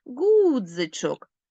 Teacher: звук и наближений до е ми його не чітко чуємо